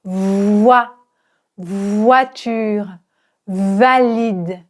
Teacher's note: Le V qui est proche du F. Mais il y a une vibration